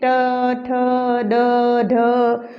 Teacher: मूर्धा के पास हमारी जो जीभ है वो जाएगी